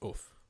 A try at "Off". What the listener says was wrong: put too much emphasis on the O. It's more like